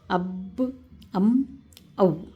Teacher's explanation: تو دیکھیں، اب اس کا بھی میم کا نکالنے کا طریقہ دیکھیں، میم کے اوپر جزم، اس سے پہلے زبر، تو ام، واو کے اوپر جزم، واو سے پہلے زبر، او۔ تو یہ 3 حروف جو ہیں دونوں ہونٹوں سے نکلتے ہیں